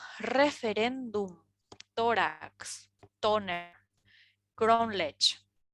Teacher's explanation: Son palabras llanas porque el acento prosódico se sitúa en la penúltima sílaba y terminan en consonantes diferentes a N y S.